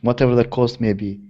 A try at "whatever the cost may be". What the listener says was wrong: Yeah, whatever the cost may be. Yes, I think if we say this may be, we have to get quite a clear B instead of maybe.